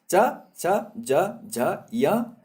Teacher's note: इतने वर्णों को बोलने के लिए हमें तालु का प्रयोग करना पड़ता है। तालु यानी जीभ को हमें ऊपर वाले मुंह की तरफ तालु की ओर स्पर्श करना पड़ता है, तब ये वर्ण तालव्य वर्ण कहलाए जाते हैं।